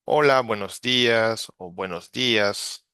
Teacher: if you are listening from central Mexico, well, we use this kind of clear neutral vowels